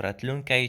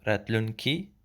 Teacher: Ratlunkai is the original form of which means future, and in prepositional phrase the I sound changes to E, so ratlunkai changes to ratlunki